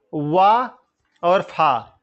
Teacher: वा, फा कहां से बोले जाते हैं, दंतोष्ठ से बोले जाते हैं